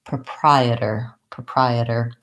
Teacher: going to use a flap which is going to sound more like a D